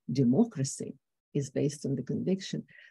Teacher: Democracy is at a higher level. And that makes it sound brighter, lighter